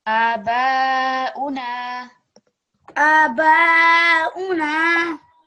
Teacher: Make this a little bit longer because it's alif madda.